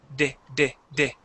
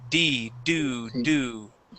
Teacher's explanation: my tongue moves up and down. It doesn't move forward, and I do not touch my teeth. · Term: D sound